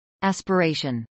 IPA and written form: ˌæspəˈɹɛɪʃən (aspiration)